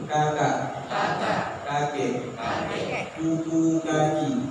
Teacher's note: Kaf berada di pangkal lidah juga, tapi di bawahnya huruf qaf. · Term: huruf kaf